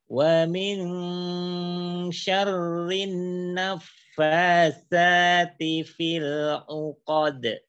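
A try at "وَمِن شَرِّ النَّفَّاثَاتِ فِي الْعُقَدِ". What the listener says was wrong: Ayo nun tasydidnya, jangan kelupaan. Wa min syarrin naffatsa.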